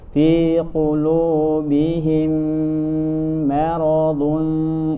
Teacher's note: Lanjutkan fi qulubihim idgham mimi, mim ketemu mim namanya idgham mimi atau idgham mithlain, dan tentu ini harus ditahan sempurna,